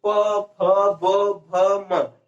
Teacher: इसका उच्चारण कहां से हो रहा है, ओष्ठ से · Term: प वर्ग